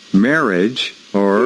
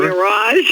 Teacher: you don't accent the first part, accent the second part.